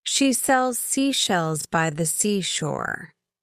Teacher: For the s sound, the tip of your tongue is close to the ridge just behind your upper front teeth, but not touching it. Keep your lips relaxed and slightly open.